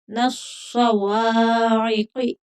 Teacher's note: قاف موٹا پڑھا جائے گا، حرف مستعلیہ ہے